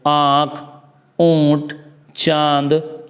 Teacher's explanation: उच्चारण करते समय मुंह से अधिक एवं नाक से बहुत कम हवा निकलती है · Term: अनुनासिक